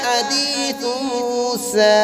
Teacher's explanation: سین کو ایک الف کی مقدار کھینچ کر پڑھیں گے